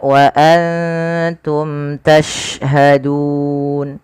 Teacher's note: ini ada bacaan mat arid disukun, kita boleh memanjangkan 2 harokat, 4 harokat ataupun 6 harokat. Tapi kita ngambil yang pertengahan, tidak terlalu panjang dan tidak terlalu pendek, yaitu 4 harokat.